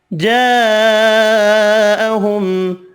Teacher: وَلَمَّا جَاءَهُمْ رَسُولٌ مِّنْ عِندِ اللَّهِ مُصَدِّقٌ لِّمَا مَعَهُمْ نَبَذَ فَرِيقٌ مِّنَ الَّذِينَ أُوتُوا الْكِتَابَ وَلَمَّا، میم مشدد پر غنہ کریں گے، الف مدہ ایک الف کی مقدار میں کھینچ کر پڑھیں گے۔ جاءہم، بڑی مد 5 الف کی مقدار میں کھینچ کر پڑھیں گے، میم کا اظہار ہوگا۔